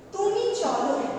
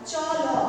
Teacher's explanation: কেমন দেখো, মধ্যম পুরুষে যে অনুজ্ঞা বোঝাতে সেখানে ক্রিয়াপদের শেষে যে অটা থাকে সেটা কিন্তু লুপ্ত হয় না